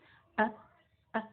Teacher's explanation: huruf H ketika disukun dia tidak sampai menutup Tetapi hanya menyempit jadi er suaranya nggak nggak nggak langsung terputus ah ah gitu